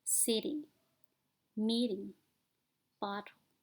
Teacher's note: this positional variation is called a flap t why does this happen because it's easier to continue voicing and · Let's start with the flap T sound, which is found in the word water. When the t occurs between voiced sound, it sounds more like a quick d